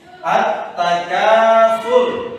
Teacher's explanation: Tafkhim. Itu tetap tebal. Kenapa dibaca tebal? Karena roh mati Sebelum ro ada doma.